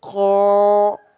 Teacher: क़ा मोटा है, पुर हरफ है, और चूँकि ये अलिफ से पहले है तो इसने अलिफ की भी आवाज़ को पुर कर दिया, यानी मोटा कर दिया। · जैसे क़ाफ़ मोटा हुआ तो अलिफ भी खुद ब खुद मोटा हो गया। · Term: तफ़ख़ीम